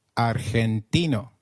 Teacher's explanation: In Spanish, G, when followed by E or I, is pronounced like a throaty H.